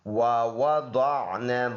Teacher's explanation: ضاد موٹا حرف ہے، منہ بھر کر پڑھنے والا · واو ادا ہوتا ہے دونوں ہونٹوں کے گول کرنے سے